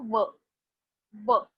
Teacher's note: My upper teeth are touching my lower lip. · व इज दंतोष्ट्य मतलब दांत भी यूज करते हैं व बोलते टाइम और ओठ भी यूज करते हैं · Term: लेबियोडेंटल